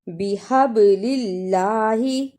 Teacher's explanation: بِحَبْلِ اللَّهِ، با کو جلدی پڑھنا، حب اس با پر قلقلہ بھی کرنا ہے اور اللہ کو نرم زبان سے ادا بھی کرنا